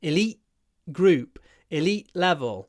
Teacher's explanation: in elite group, elite level, I do a glottal stop because I have a T before a consonant.